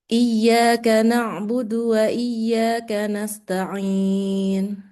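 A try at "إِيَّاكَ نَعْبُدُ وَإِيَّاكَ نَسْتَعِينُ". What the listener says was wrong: Iya, bagus.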